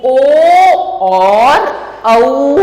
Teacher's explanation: और कंठ तालु से निकलने वाले ए, आई, इसको हम कंठ तालव्य कहते हैं। और कंठ ओष्ठ से जिनका उच्चारण होता है वो ओ और औ होते हैं, उनको कहा जाता है कंठोष्ठ्य।